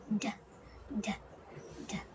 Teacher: Ang D naman ay napabilang sa pangipin at pasara na may tinig. Ito ay binibigas na d.